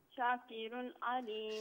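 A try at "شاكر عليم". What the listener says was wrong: شاہ کو ذرا کھینچیں. شاکر علیم.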